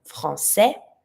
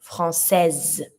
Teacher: I'm not going to pronounce my E, but I'm going to pronounce the S this time. So I'm going to go from français to française.